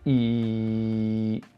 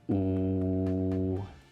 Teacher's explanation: They're going from spread to rounded.